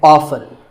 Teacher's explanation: the more common pronunciation is with the T silent.